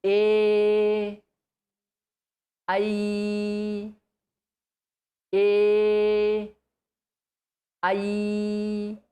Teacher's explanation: So, A, I are kanthatalu, two places they are using.